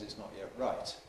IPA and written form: ɪʔs ˈnɒʔ jeʔ ˈraɪt (it's not yet right)